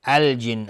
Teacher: نون مشدد 2 حرکت غنه میدیم